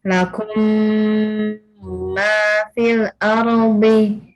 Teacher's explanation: Lakum ma beda. Jadi huruf mim mim sukun ketemu mim itu harus didengungkan sama dengan ketika nun sukun ketemu wau, nun sukun ketemu mim, itu dengungnya sama ya. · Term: idgham mimi